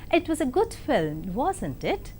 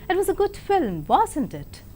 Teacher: But when you use a falling tone, you are asking him to agree with you